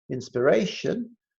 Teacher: Inspiration, the stress syllable is the ray.